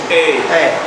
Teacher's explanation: Les closing diphthongs, vous allez voir que vers la fin, ça ferme.